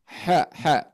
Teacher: Nah Ha ini keluarnya dari tengah-tengah tenggorokan